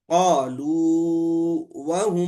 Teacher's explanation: हरफ मदद में इदगाम नहीं होगा। अब इसको जो है हम मद करके पढ़ेंगे। कॉलू व अब तबीह बतला रहे हैं सूरतुल हाका में मालिया हलका की हा पर वसलन सख्त खुफिया मरवी है खुफिया बिल्कुल जो है छुपा हुआ सता यहां पर मरवी है इसलिए यहां पर भी इदगाम नहीं होगा यहां पर थोड़ी सी मिसाल है इदगाम सगीर की है।